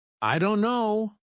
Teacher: The T sound is dropped completely. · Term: dropped sounds